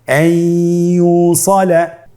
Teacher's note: নুনকে আমরা পরবর্তী হরফ ইয়ার সাথে মিলিয়ে গুন্নার সহিত পড়ব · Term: ইদগামে বাগুন্না